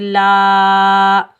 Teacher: ऊ, लाम के ऊपर ज़बर, आगे अलिफ खाली के ऊपर बड़ी मद है मद्दे मुत्तसिल वाजिब, इसको हम 5 अलिफ की मिकदार खींच कर अदा करेंगे।